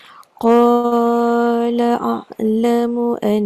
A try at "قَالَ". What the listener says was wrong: Pendek. 2 harakat je. Jangan panjang sangat. Qala